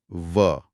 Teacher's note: ऊपर के दांत नीचे के होंठ को छू रहे हैं। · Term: दंतोष्ठ्य